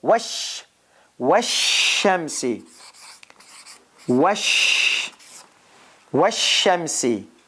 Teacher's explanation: the article goes away in pronunciation